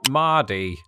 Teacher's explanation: one of the defining linguistic traits shared by most, though not all, Americans is the post-vocalic R in words like, well, Mardy. Aside from the fact that it sounds like the name Marty in American English, rhotic speakers in the US would more or less pronounce this regionally English word as Mardy.